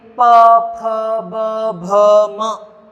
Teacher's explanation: इनका उच्चारण करते समय वायु हमारे ओष्ठ से टकराती है, तो इन्हें ओष्ठीय व्यंजन कहा जाता है।